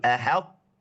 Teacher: Bukan ahat tapi ahad lidahnya ketemu makhraj th jangan lepas lagi.